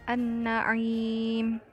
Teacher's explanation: huruf syamsiyah tersebut dibaca karena adanya tasydid dan huruf alif lam tetap ada namun tidak dibunyikan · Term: idgham syamsiyah